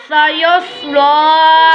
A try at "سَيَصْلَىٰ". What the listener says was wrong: सीन और स्वाद में फ़र्क रखना है। सयस्ला